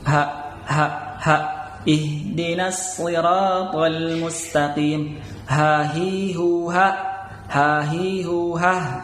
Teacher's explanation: ada di pangkal tenggorokan ya, pangkal paling bawah, berarti tenggorokan paling bawah. Jadi suaranya h, ada getaran di sini. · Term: h besar